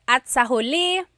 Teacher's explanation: Even though there's that TS meeting there, you don't really say at sa huli. It's separate.